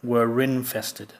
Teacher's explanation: the r is pronounced if the next word starts with a vowel sound